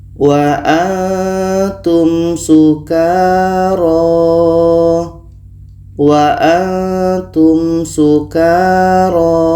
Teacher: Ada mim mati bertemu sa. Ini izhar syafawi, maka dua-duanya dibaca jelas dan tidak dengung.